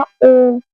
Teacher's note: आप ओम का जब स्वर का उच्चारण कर रहे हैं तो उसमें ज्यादा समय लग रहा है।